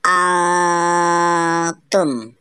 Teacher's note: karena nun sukun bertemu dengan huruf ta nun sukun dibaca samar dan didengungkan selama tiga harakat atau tiga detik